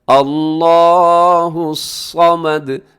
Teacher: لفظ اللہ موٹا پڑھنا ہے، صمد میں صاد موٹا ہے، صمد، اور اس میں بھی دال کو آخر میں ہلائیے گا۔